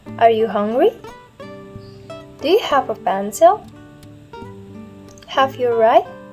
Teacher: my voice in the end of the sentence is using rising pattern or rising intonation